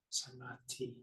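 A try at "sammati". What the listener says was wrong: But I think you were slightly shy about giving the full doubled emphasis to Samati. If you're going to err on the side of overemphasizing the doubling, because if you fail to do the doubling at all, it becomes a different word.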